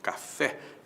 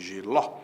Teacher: tônica é a última, a palavra é oxítona